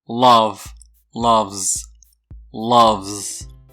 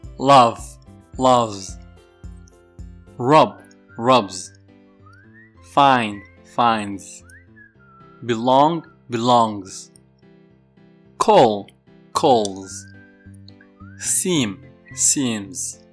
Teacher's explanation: pronounce the final s with a voiced sound as well that is the z sound